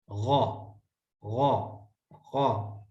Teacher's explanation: زبر غو، غین کا مخرج آپ کو پہلے پتہ چل گیا، غین کا مخرج ہے ادنی حلق